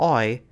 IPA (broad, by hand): ɔɪ̯